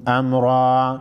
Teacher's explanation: अमरा वक़फ़ की सूरत में एक ज़बर को ख़त्म करके एक को अलिफ के मकदार खींच कर पढ़ेंगे और रा पर ज़बर है, रा को मोटा पढ़ेंगे।